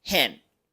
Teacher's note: Enseguida pronunciamos un sonido muy particular del inglés, la ash, que no es una A y tampoco una E. No es hand ni tampoco hand.